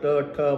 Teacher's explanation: म्हणताना जीवा ज्या ठिकाणी टेकते त्याला म्हणतात मूर्धा